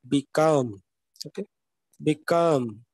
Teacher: second syllable will be accented